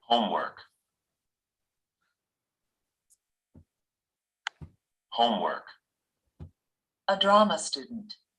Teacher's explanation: A noun compound consists of two words that come together to make a noun with a new meaning. In noun compounds, such as homework and drama student, the main stress is on the first word. The first word is longer, stronger, and higher in pitch than the second word.